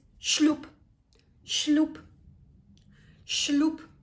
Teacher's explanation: we have the letter B at the end, but we don't pronounce it as letter B. We pronounce it as letter P